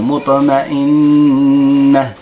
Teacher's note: النون مشددة، كل نون مشددة كل ميم مشددة نعطي الغنة تخرج من الأنف مقدار حركتين